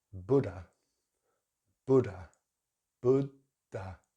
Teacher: This word in British English is Buddha, Buddha, Buddha. So we just have the schwa at the end. Don't worry about the letter H.